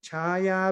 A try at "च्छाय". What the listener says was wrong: OPG, the third line, chaya, not, I think you're saying chaya, just there's no ya there, just chaya.